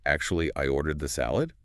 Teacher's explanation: Tone completely alters the meaning of "actually." Used softly with a slight upward inflection, it's a gentle redirection. Used forcefully with a downward inflection, it becomes a reprimand.